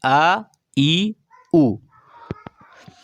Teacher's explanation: ये ह्रस्व स्वर भी कहे जाते हैं क्योंकि इनके उच्चारण में दीर्घ स्वरों से कम समय लगता है